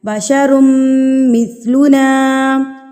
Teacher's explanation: آپ کو کہیں پر بھی نون مشدد اور میم مشدد دکھ جائے تو آپ نے اس پر ایک حرکت کے برابر غنہ کرنا ہے، یعنی کہ ایک انگلی کھولنے میں ہمیں جتنا ٹائم لگتا ہے یا 1 سے 2 سیکنڈ آپ نے وہاں پر غنہ کرنا ہے۔ غنہ کرنا کہتے ہیں ناک میں آواز کو لے کر جانا، تو میم کی آواز کو آپ نے ناک میں ایک حرکت کے برابر یا ایک الف کے برابر روک کے رکھنا ہے۔